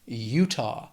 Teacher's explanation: 2 syllables, stress is on that first syllable